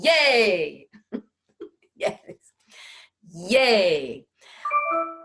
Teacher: that yeah sound occurs in the back of the mouth in what we call the soft palate